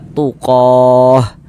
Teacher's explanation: kalau kita berhenti berwakaf di huruf tam marbutah kita baca tuqoh. Jangan dibaca tuqot. · Dan kaedahnya itu cara membaca huruf ta marbutoh, kalau dia diwakafkan ya, kalau dia berwakaf, kalau kita berhenti di huruf ta marbutoh, maka dia menjadi huruf ha. Huruf ha yang dibaca kalau kita berhenti di sini, maka ini kita baca tuqoh.